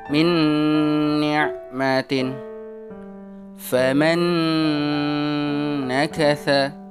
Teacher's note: Suara nun sukunnya melebur menjadi satu di suara huruf nun di depannya. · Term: idgham bi guna, idgham bighunnah